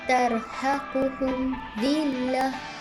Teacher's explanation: huruf mim sukun bertemu dengan huruf dha dibaca dengan jelas tanpa dengung